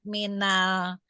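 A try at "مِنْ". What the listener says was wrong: min Bu, enggak almannya, enggak ada alif.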